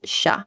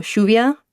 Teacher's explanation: if you were to be looking at like Mexican Spanish it's more of a ya sound but here it's sha almost like the sh sound in English